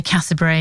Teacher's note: If you're from Watford, you just say Cassiobury. You drop half the syllables because it's a bit lazy.